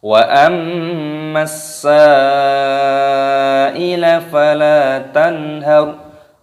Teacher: Mimnya tasydid dimasukkan, diidghamkan, berdengung.